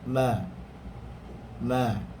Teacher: Ma hanya bersentuhan dua bibir sahaja.